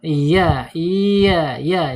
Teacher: tengah lidah atau punggung lidahnya ee menyentuh langit-langit tetapi tidak ada penekanan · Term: makhraj